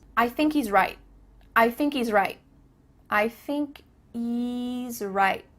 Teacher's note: There's no H happening here. I thinky thinky Kind of sounds like you're saying thinky.